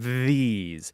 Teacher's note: say the word these and you can feel your tongue vibrating on your teeth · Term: voice th